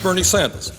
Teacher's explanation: R's often get dropped, except before vowels. So newscasters call him Bernie Sanders, but he calls himself Bernie Sanders. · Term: R dropping